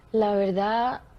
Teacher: utilizando la consonante dental fricativa sonora, alófono del fonema D, apareciendo al final de palabra